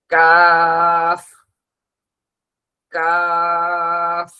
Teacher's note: কাফটা এই জিহ্বার গোড়া, হ্যাঁ, উপরের তালুর সাথে লাগে